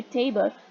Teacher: l sound is behaving as syllabic consonant, and itself becomes a syllable. So there is a teeny tiny schwa sound that is hidden, which you cannot see, but this is the phenomena of syllabic consonants.